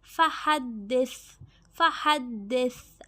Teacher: یہاں پہ دیکھیں سا، سا کی آواز نرمی سے ادا ہوتی ہے، ٹھیک ہے. ہا حلق کے درمیان سے